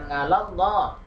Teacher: Oke, kemudian yang ke-9 ngalallah, ini ada lam jalalah tafkhim karena lam jalalahnya didahului fathah ya. Ini dibaca tebal.